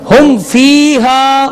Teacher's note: یہاں میم ساکن کے بعد حرف آ رہا ہے، تو اس لیے یہاں پہ اظہار شفوی ہوگا اور غنہ نہیں کریں گے